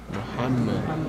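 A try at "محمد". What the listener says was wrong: Muhammad Rasulullah. Pucker. If you say Muhammad, right? It's the Memini Gujarati way to say, right? Muhammad is not correct. Everyone pucker your lips, say Mu. Ha. Muhammad.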